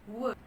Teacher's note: vokal yang lain u kemudian e jadi dia adalah Glide teman-teman dia mulus sekali perpindahan antara satu vowel ke vowel lainnya